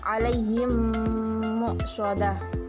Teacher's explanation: Jika terdapat mim sukun atau mim mati bertemu dengan huruf mim, maka bacaannya disebut idgham mimi. Maka cara membacanya adalah seperti menyuarakan mim rangkap atau ditasydidkan dan wajib didengung.